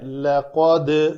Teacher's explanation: تجوید کے اعتبار سے پہلے پڑھ لیتے ہیں۔ لقد دال کے اوپر قلقلہ کریں گے، قاف کو پر کریں گے، لیکن قاف کو پر کرنے کے ساتھ دال کو بھی نہیں پر کریں گے۔